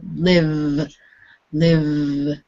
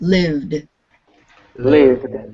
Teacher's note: the V needs to be pronounced in your throat there is a vibration with Liv live and if it's vibrating it's voiced and what